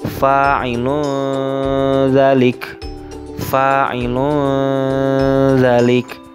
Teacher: domah tanwin yang terdapat pada huruf lam dibaca samar karena bertemu dengan huruf dza atau dalal